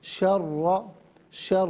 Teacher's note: را کو جماؤں کے ساتھ ادا کریں گے، ڈبل آواز نہیں ہوگی